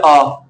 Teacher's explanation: फिर इसमें तुम्हारे याद ही कर लो डायरेक्ट, पूरा मुंह खुलता है जैसे आ। विवृत में भाई पूरा मुंह खुलेगा उच्चारण करने में